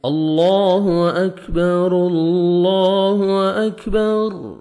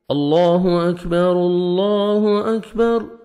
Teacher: را کو ہم نے لام کے ساتھ ملانا ہے